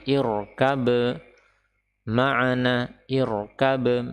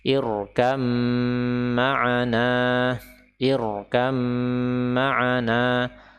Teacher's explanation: huruf ba ini seolah-olah tidak ada dan memang tidak perlu kita baca · huruf mim ketika ditasydid maka dia wajib untuk diberikan gunnah, diberikan gunnah. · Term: idgham